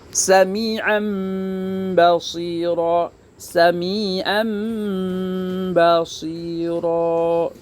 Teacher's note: Artinya sih membolak-balikan kalau iklab. Mengganti bunyi nun mati dan tanwin ke dalam bunyi bunyi mim.